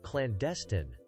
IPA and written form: klænˈdɛstɪn (Clandestine)